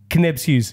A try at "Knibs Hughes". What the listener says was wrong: Nibs Hughes. Silent K. Like a doorknob. Silent K. Like a doorknob,